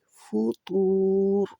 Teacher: حل ترا من فطور، تو آپ کے ہونٹ گول ہونے چاہیے، جب بھی پیش آتی ہے ہونٹ گول ہوتے ہیں، جب بھی واو ہم پڑھتے ہیں ہونٹ گول کرتے ہیں۔ فطور، را کے اوپر جزم لگا کے رکیں گے تو اس کو تو کو لمبا کرتے ہوئے را جزم والی پڑھیں گے، اور را جزم والی موٹی رہے گی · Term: موٹی را